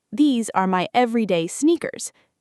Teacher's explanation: Smooth, stress on the first syllable.